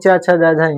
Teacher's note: च है इसका उच्चारण स्थान हमारा तालु है